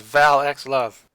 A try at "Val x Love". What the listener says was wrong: No, usually they don't pronounce the X here, so it's like, like Hunter x Hunter, for instance.